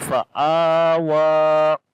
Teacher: This is again standing fatha on the alif. On this, there is a standing fatha on the alif and also the standing fatha on the wa. So both letters we long one alif.